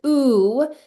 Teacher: And so it's not vu. We're not saying the v sound of the vav. We're just saying ooh. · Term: shuric vowel